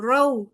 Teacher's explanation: वाव लीन रऊ बगैर लंबा किए हुए नरमी के साथ अदा होगा